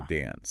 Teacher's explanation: In General American, the A in dance is usually short, like the A in cat.